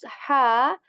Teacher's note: articulate this letter from the middle portion of throat with a lot more air than the ha of Allah word